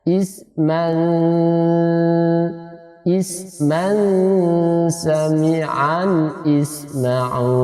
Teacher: Tanwin menghadapi sin, maka dia disamarkan, suara nun disamarkan di dalam sin.